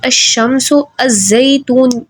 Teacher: اگر الف لام کے بعد حروف شمسی آ جائے تو لام کا ادغام ہوگا، یعنی لام نہیں پڑھا جائے گا۔